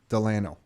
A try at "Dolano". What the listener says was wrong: A lot of people accidentally spell it with a D-E, then they say Delano, but with the O, it's more Spanish.